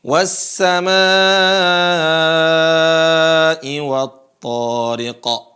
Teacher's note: Kemudian ketika ada hamzah setelah mad, maka intonasi panjangnya melebihi intonasi mad tabi'i